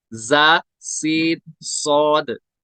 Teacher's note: ये तीनों हुरूफ सीटी के साथ निकलते हैं, इनकी ये सिफत है।